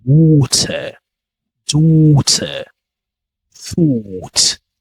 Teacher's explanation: the sound is deeper and round in RP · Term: deeper O sounds